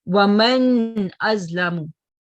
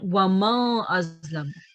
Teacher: And if it's followed by one of these above 7 letters, the sound of the noon should be pronounced clearly without any nasal sound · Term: izhar